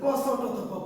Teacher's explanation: তাহলে ক ছ ট ত প অঘোষ অল্প প্রাণ